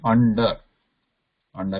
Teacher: anusara is not there so we are pronouncing it as n this is a nasal plus it is cerebral or retroflex